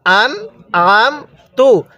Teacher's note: নুন সাকিনের পরে আইনটি হলো ইজহারের হরফ, এজন্য আমরা এই নুন সাকিনটা স্পষ্ট করে পড়ছি। আর নুন সাকিনের পরে যখনই দেখবেন ইজহারের 6টি হরফ থেকে কোনো একটি হরফ আছে, ওই নুন সাকিনটা আপনারা স্পষ্ট করে পড়বেন।